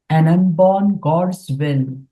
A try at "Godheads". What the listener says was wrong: Now, I didn't hear Godheads. I think you have to pronounce it much clearer. Godheads.